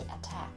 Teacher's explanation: the T sound is aspirated when the air is released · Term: aspiration